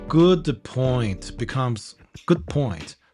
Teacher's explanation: don't release the d in good